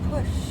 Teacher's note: We don't feel a vibration, so it's voiceless.